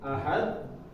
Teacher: Dal pangkal gigi ya, ujung lidah ketemu pangkal gigi atas.